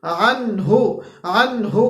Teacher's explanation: ما اغنا عنہ، عنہ، عنہ کے اندر عین اور پھر ہا، عین اور پھر ہا، عین وسط حلق سے اور ہا ہمارے پاس اقصا حلق سے